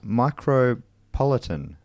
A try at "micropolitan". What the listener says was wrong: I guess you're saying it like cosmopolitan, micropolitan.